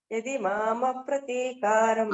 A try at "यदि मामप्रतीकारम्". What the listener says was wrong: ఏది మామ ప్రతీకారం అంటే మేడం అక్కడ విడదీయకూడదు, అంతే. విడదీస్తే కొంచెం సంధి తప్పిపోతుంది, అందుకోసం.